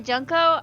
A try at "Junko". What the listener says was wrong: pronounce that with a short U sound, I die a little more inside.